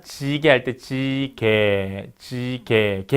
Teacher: 혀의 앞부분을 반 정도 올리고 입술을 편 상태에서 발음하면 된다. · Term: 전설평순 중고모음